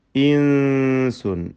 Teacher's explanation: സാക്കിനായ നൂനിനെ ഇഖ്ഫാ ഹഖീഖി, അവ്യക്തമാക്കി മണിച്ചുകൊണ്ട് ഉച്ചരിക്കുക